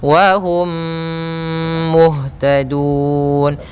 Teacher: mati bertemu mim yaitu ada hukum bacaan Idam Mimi cara membacanya mim mati yang pertama masukkan kepada m kedua dan ditahan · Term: idgham mimi